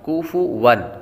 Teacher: کاف باریک ہے، اور واو پر تنوین ہے، تنوین کے بعد حمزہ حروف حلقی میں سے آ رہا ہے تو غنہ نہیں کریں گے